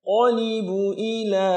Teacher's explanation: Qafnya tebal dalam pangkal lidah. Libu ila, libu i itu 1 harakat semua.